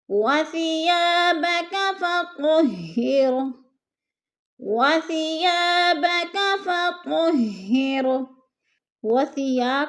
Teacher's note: الف خالی سے پہلے زبر ہے تو الف مدہ، اس کو 2 حرکات کے برابر ہم نے لمبا کر کے پڑھنا ہے۔